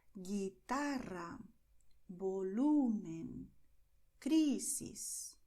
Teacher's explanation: You stress the second to last syllable. It doesn't matter how long the word is.